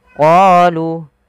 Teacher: panjangkan huruf qa 2 harakat karena pada lafal qa ada bacaan mad tabi'i, yaitu ditandai dengan huruf qa yang bertemu alif setelahnya.